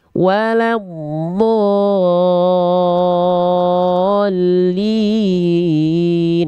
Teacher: Ada mad lazim musakol kilmi namanya di sana. Do-nya harus 6 harokat, nggak boleh kurang.